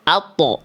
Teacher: ketika kita melafalkan to kan pasti ujung lidah nempel dulu ke pangkal gigi seri atas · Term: huruf to